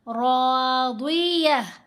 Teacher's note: ली सा ये हा रादिया। रा को भी मोटा पढ़ेंगे, रा के ऊपर ज़बर है, साथ अलिफ है, अलिफ हरफ मद्दा है, लंबा भी किया